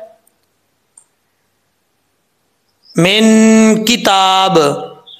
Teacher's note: इसके बाद है मिन किताब, मिन इलही का के बाद मिन है, आगे किताब है, काफ रुफे इख्फा में से है, नून साकिन के बाद आ रहा है तो यहाँ पे इख्फा का गुन्ना होगा, नून साकिन का इख्फा, एक अलिफ की मकदार गुन्ना किया जाएगा